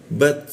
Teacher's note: huruf ta dimatikan, menggunakan ujung lidah ditempelkan ke gigi, ada bocor halus ya